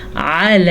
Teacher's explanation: لام پہ کھڑی زبر ہے تو اسے ہم نے کھینچ کے پڑھا، کیونکہ کھڑی زبر اور زبر کی مقدار میں فرق ہوتا ہے، یعنی کہ اس کو ہم آ نہیں پڑھ سکتے، ہم نے پڑھنا ہے آ۔